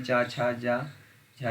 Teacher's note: तो उसमें से तालु से होता है छा का, तालु, ये तालव्य ध्वनि है, चा छा जा झा ये सभी तालव्य ध्वनियाँ हैं